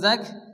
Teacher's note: কাফের উপরে কি আসছে তাসরিদ আসছে এজন্য কাফ দুবার উচ্চারণ হবে